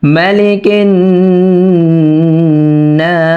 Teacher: এই নুনে তিন আলিফ পরিমাণ টেনে তারপর সিনে থামতে হবে